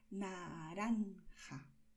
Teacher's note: Para esta forma de pronunciar la R, no expulsas el aire y tu lengua hace un movimiento muy rápido. Tu lengua toca los dientes frontales de una manera muy rápida y vuelve.